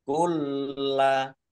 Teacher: Qaf lam tanda waqaf boleh terus tetapi berhenti lebih baik. Kulla lamnya dibaca double, ada tasdidnya. Biar tampak double maka ditekan.